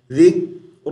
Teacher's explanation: ذال کو کاف سے ملائیں گے تو تھوڑی دیر کے لیے رک جائیں گے تاکہ ذکر قلقلہ نہ بن جائے